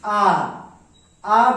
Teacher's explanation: आ बोलने के पश्चात जीभ के पिछला भाग काम कर रहा है, इसीलिए इन्हें पश्च स्वर कहा गया है